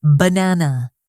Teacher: the word banana, the stress is on the second syllable